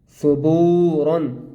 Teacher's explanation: سا پہ سو با واو پیش بو صبو را الف دو زبر رن صبورن. با کو ہم نے ایک الف کے برابر کھینچ کر پڑھنا ہے